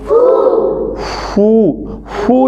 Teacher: हमारे ऊपर वाले दोनों दांत अंदर नीचे वाले होठों के अंदर गीले वाली साइड से लगते हैं